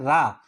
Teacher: रा को लुंठित कहा जाता है। रा जो है जिसमें मूर्धा से बोला जाता है रा